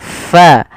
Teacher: ada angin yang dikeluarkan karena fa salah satu sifatnya sifat hames, yaitu mengalirnya nafas kita